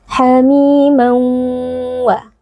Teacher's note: Idgham bi gunnah karena ada tanwin yang bertemu dengan huruf waw dibaca dengan dengung yang dipanjangkan dan juga meleburkan tanwinnya ke dalam huruf waw